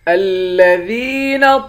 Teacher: الذین ذال کو یا کے ساتھ ملائیں گے، یا کو ایک الف کے مقدار کھینچ کر پڑھیں گے، یا حروف مدہ ہے